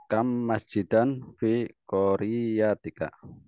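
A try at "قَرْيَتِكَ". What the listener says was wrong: bukan kori nggih, korya.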